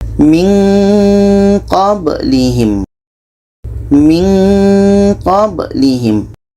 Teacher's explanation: Ketika kita menyebut Nun kita sudah merasakan huruf q maka seolah-olah ada bunyi Eng di situ